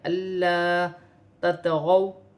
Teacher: تا اور طا کا مخرج ایک ہی ہے لیکن تا باریک ہے اور طا موٹی ہے۔ واو ساکن سے پہلے زبر ہے تو واو لین بنے گی، اسے کھینچا نہیں جائے گا۔